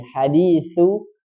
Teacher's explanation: Kalau sa itu di ujung lidah dengan 2 gigi.